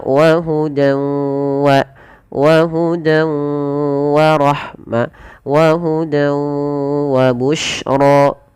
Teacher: tidak sempurna diidghamkannya, masih menyesuaikan sedikit bunyi suara nun. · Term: idgham naqis